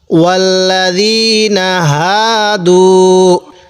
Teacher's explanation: জবরের বামে খালি আলিফ থাকার কারণে এখানেও এক আলিফ টান দিব। আর হাটা উচ্চারণের সময় মুখ দিয়ে একটু আওয়াজ বের করব, কারণ এটা তো ছোট হা। ওয়াল্লাযীনা হা দাল ওয়াও পেশ দু।